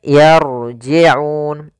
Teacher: rnya di sini ro tafkhim ro tebal